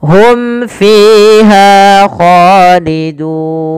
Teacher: Jelaskan suara mimnya pada lafal hum fiha karena ia izhar syafawi. Fiha fi dan ha.